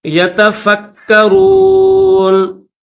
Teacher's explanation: یہ جو نون کے اوپر زبر ہے اس زبر کو نہیں پڑھیں گے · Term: جزم